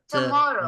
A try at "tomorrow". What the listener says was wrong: Not to, don't round your lips. Just Not Tana.